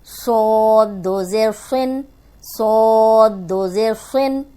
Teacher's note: صاد موٹا بھی ہے اور سیٹی والا بھی ہے